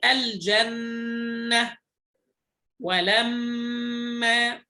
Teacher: هنا النون والميم فيها غنة أكمل وأظهر · فهنا الغنة في النون والميم المشددتين أكمل ما تكون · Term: حرف غنة مشدد